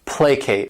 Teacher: This word has 2 syllables, and the stress is on that first syllable, placate. And what it means is to appease by giving something up.